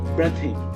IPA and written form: ˈbriːðɪŋ (breathing)